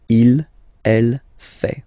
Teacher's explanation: Il, masculin, and then elle, féminin, fait. Final T not pronounced.